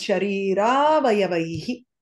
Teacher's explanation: Both a plus a takes on the longer form of that a and becomes sharira avayavaihi. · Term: dirgham